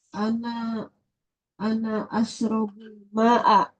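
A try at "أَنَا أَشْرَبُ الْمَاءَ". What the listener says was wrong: Masya Allah ya.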